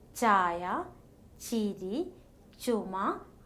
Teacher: The breath carries no vibration of vocal cords. No air passes through the nasal cavity.